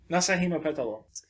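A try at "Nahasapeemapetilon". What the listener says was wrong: It's longer than that. There's one extra syllable, I think.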